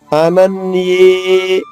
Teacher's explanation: రెండు హల్లులు ఉన్నాయి న ఒకటి ఏ ఒకటి దీర్ఘం కూడా అనన్యే అంటే అ న ఈ రెండు హ్రస్వాక్షరాలు వాటికి ఒక్కొక్క అక్షరం పలికితే ఎంత సమయం పడుతుందో దానికి రెట్టింపు సమయం ని పలకాలి